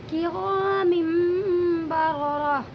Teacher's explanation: یعنی آپ اسے کرامن نہیں، نون کی آواز نہیں نکالیں گے بلکہ میم کی نکالیں گے